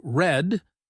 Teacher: in the word red, we round our lips a bit and let the sound come from the back. We do not roll the tongue. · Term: r sound, R sound